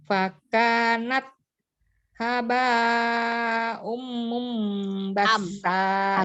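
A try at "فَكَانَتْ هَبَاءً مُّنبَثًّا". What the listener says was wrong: Haba'am, bukan haba'um. Fathah tanwin ya, hamzahnya fathah tanwin. Haba, tidak tasdid baknya, haba. Haba'am, haba'am. Ya, bukan haba'um. Iya, itu bukan huruf sin, bukan basa, tapi basa. Hurufnya sa ya. Fakanat haba, haba ya, bukan habba.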